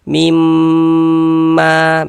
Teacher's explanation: di bagian mimnya itu suaranya itu kita tahan, kita panjangkan sejenak. Mimma, begitu ya. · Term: gunnah musyaddadah